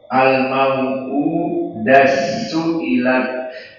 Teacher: Maka idgham kabirnya di sini dengan diidghamkan ta kepada sin